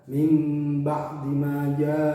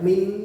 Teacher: nun sukun bertemu dengan ba harus dibaca nunnya itu berganti menjadi mim